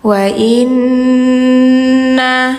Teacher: harus dengung dulu, ditahan dulu karena nunnya bertasydid, hukumnya gunnah.